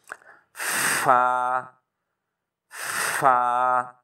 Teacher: सनाया उलिया का किनारा और नीचे वाले होंठों का अंदरूनी हिस्सा, तो जब पढ़ेंगे इससे थोड़ी सी हवा भी पैदा होती है।